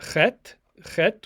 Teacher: Then we have Chet, Chet, which is a sound that's not part of the English language, at least as it's spoken in the United States. Chet is more of a throat-clearing sound and takes a little practice for English speakers.